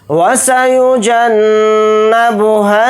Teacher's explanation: نون کے اوپر تشدید ہے تو نون کے اندر غنہ کر کے پڑھیں گے